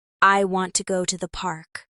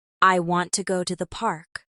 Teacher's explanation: The stress is on want and park.